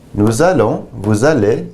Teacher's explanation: Notice here we have a liaison, which makes a Z sound.